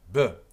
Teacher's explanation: And if you put your hand here and you go B, you can hear the vibration, b, and your lips are involved